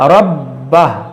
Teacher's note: اس الٹا پیش کو بھی ہم ساکن کریں گے ربہ اور را کو موٹا کریں گے اور با حروف قلقلہ ہے اور مشدد ہے اس کو پڑھیں گے دو بار اور جماع کے ساتھ ربہ